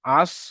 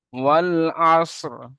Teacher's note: তো এখানে এই রটিকে যখনই আপনি হালকা আওয়াজ দিয়ে পড়বেন, বাতিনি পড়বেন। ওয়াল আসর, শেষে রটি হালকা উচ্চারণ হবে। যদি সাকিন করে পড়তে সমস্যা হয় এখানে আপনি রয়েসের রি পড়বেন, ওয়াল আস রি।